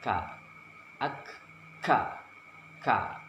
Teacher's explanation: Pengucapannya seperti huruf K disertai keluarnya napas